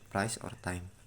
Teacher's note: An example is the word price or time. The sound starts with the vowel A then shift to I. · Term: diphthong